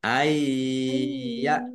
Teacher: Bacaan idgham bih masuk dengan mendengung yaitu masuk ke huruf ya. Nun sukunnya tidak dibaca. Ay tu ditahan ya.